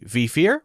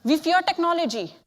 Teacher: Speaker's using her top teeth against her bottom lip. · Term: W versus V mix-up